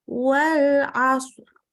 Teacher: maka ini ro-nya karena hurufnya sukun sebelumnya, kemudian huruf sebelumnya fathah, maka bacanya ro-nya tebal